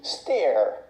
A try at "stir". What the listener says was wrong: This word is not pronounced steer. It's pronounced stir, using the sound like burger. It's a closed sound, and you make a voice in the back. Here, low, in a low position. Burger, stir, stir, not steer.